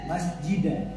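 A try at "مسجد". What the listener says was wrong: Oh tidak, bukan masjidah tapi masjid. Dia cenderung ke kalkalanya cenderung ke. Jadi ada dua bentuk kalkala. Ada yang bunyinya cenderung ke ada yang o. Kalau dia huruf dan ba itu cenderung ke masjid qad. Kemudian qaf ta itu o. Jadi bukan masjid tapi masjid. Hanya mungkin bunyinya yang seolah-olah kedengaran seperti itu.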